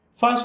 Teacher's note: Fácil é uma palavra que tem duas sílabas e a mais forte é Fá. Fá é a penúltima sílaba dessa palavra, certo? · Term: paroxítona